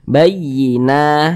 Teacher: maka huruf tersebut dibaca panjang, sehingganya na dibaca panjang. Nah, tanda madanya ini nih, fathah berdiri ini di atas huruf nun ini. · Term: mad tabi'i